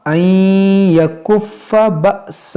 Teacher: یہاں پر دیکھیں یہاں پر ادغام کریں گے، نون ساکن کے بعد یا ہے اور یہ حمزہ ساکنہ ہے، اس کو جھٹکا دے کر پڑھیں گے